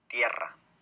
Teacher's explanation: Entonces la lengua toca rápidamente, pero en este caso varias veces, los alvéolos, ¿no? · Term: vibrante múltiple